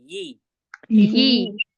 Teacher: देखिए जबान का जो बीच का हिस्सा है ऊपर टच करेंगे ना तो इ की आवाज नहीं आएगी ई की आएगी